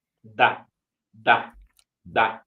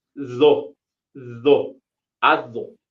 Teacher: la d que pronunciamos al inicio explosiva explosiva no es la misma que la d que está en medio está entre vocales